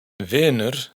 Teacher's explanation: En vinner, la i es abierta pero larga. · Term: i abierta